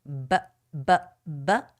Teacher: when you make that b sound BBB you can feel the vibration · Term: voiced sound